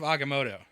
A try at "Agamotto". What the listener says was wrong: Not Motu, I think is what you were saying.